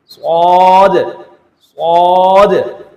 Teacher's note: صاد اس کو بھی ہم سیٹی کے ساتھ پڑھیں گے لیکن موٹا کر کے پڑھیں گے، منہ بھر کر پڑھیں گے، صاد، ساد نہیں پڑھنا ہے، ساد سین کی آواز میں نہیں پڑھنا ہے بلکہ صاد کھینچ کر پڑھنا ہے، صاد صاد۔